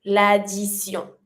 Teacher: the T pronounced like a S sound